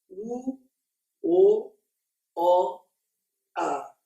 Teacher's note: Agora eu vou contrastar a série das posteriores, começando pelas orais, quanto à altura. Então vocês vão notar que o queixo vai caindo. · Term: vogais orais